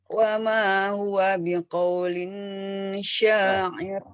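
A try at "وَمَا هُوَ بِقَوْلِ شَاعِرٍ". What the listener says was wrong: Tidak ada tanwin, Bu. Biqaulisya. Coba.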